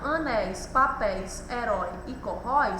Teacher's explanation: A sílaba mais forte, a sílaba tônica é a última sílaba tônica, e ela recebe o acento por apresentar um ditongo, o encontro de duas vogais que permanecem juntas na mesma sílaba. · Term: palavras oxítonas